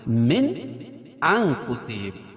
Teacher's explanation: نون ساکن کے بعد حروف حلقی کے 6 حرفوں میں سے حمزہ ہے، تو یہاں اظہار کریں گے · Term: اظہار حلقی